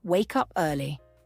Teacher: we say wake up early it's clear and connected but we pause just a little bit after wake up for emphasis we're helping to create a rhythm in the sentence it's also